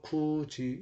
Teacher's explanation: 받침 디귿이나 티읕이 이모음이나 반모음 이를 만나면 지읒이나 치읒으로 발음되는 거.